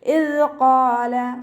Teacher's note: ഖാഫ് ഇസ്തിഅലാൻ്റെ ലെറ്ററാണ്, ഉയർത്തിയിട്ട് ഉച്ചരിക്കുക കേട്ടോ. നാവിൻ്റെ ബാക്ക് നന്നായിട്ട് മുകളിലേക്ക് പൊക്കി കൊടുക്കുക. അലിഫ് മദ്ദും കൂടെ വന്നിട്ടുണ്ട്.